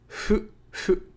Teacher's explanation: fu is halfway between the F and H sounds, plus u, making a fu sound. So it's not fu, it's not hu, it's hu, hu.